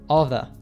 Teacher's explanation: the words all of the are pronounced as just one single unit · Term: reduce cut and connect